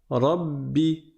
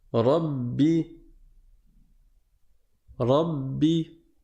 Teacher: C'est pas parce qu'il y a une shadda que je dois appuyer fort au niveau de mes lèvres et que je dois crisper les muscles des lèvres en disant Rabbi, Rabbi. Non, tu ne mets pas plus de pression sur tes lèvres. C'est juste que tu vas les bloquer pour rester 2 fois plus longtemps sur la consonne.